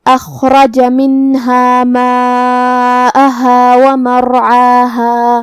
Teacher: مد واجب متصل میں ہم اپنی آواز 4 مد کے برابر لمبی کریں گے جو کہ حمزہ پہ اور ہا پہ زبر ہے تو یہ سب حرکات کا دھیان رہے. کلمت ومرعاها میں یہاں حرف العین کو ہم حلق کے درمیان والی حصے سے ادا کریں گے. آخر میں مد طبیعی ہے تو 2 مد کے برابر اپنی آواز لمبی کریں گے.